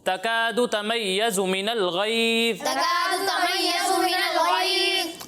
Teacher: زا میں تو سیٹی کی آواز آئے گی لیکن غو میں سیٹی کی آواز نہیں آئے گی اور اسے پر پڑھنا ہے